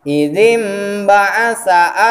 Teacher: aya nun paeh mayunan ba eta iklab ngaosna sapertos aya mim tapi dilamikeun